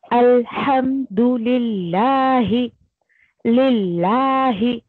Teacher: کیونکہ اس سے پہلے لی آیا ہے یعنی کسرہ آیا ہے. زیر رہے گا تو لفظ جلالہ کا لام جو ہے وہ باریک پڑھا جائے گا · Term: مرقق